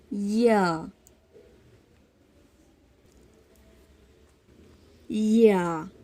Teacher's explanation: وسط زبان جب اوپر کے تالو سے لگتی ہے یا ادا ہوتے ہیں